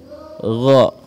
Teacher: Gha diucapkan dengan suara yang lembut. Gha dengan memoncongkan kedua bibir kita karena dia mempunyai sifat isti'la. Gha tebal ya.